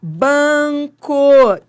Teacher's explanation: o N é fonema, ele nasalizou o A, então é um dígrafo vocálico.